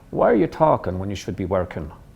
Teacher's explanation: with your tongue down in the back, observe that there's now a tendency to drop the G on ing endings.